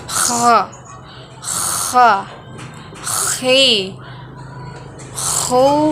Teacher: huruf ini dikeluarkan dari tenggorokan yang terdekat dengan rongga mulut kita ciri khasnya terdengar seperti orang yang sedang mendengkur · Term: huruf kha